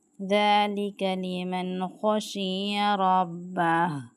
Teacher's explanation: خو کو موٹے پڑھنے، یہ حروف حلقی میں سے ہے. رب، را پر زبر ہے اور اینڈ پہ آیت کے اینڈ پہ کیا کرنا ہے، ہاں کی آواز نکالنی ہے.